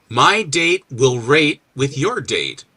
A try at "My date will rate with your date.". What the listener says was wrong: Pronounce that T a little more carefully.